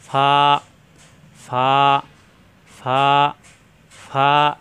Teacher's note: দাঁতের আগা নিচে ঠোঁটের পেটে লাগবে, 2 ঠোঁট একত্র হবে না